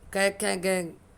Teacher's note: पूरी कै की लाइन कंठ है